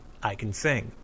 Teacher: Notice the stress. The word can is unstressed. The main verb after it is stressed.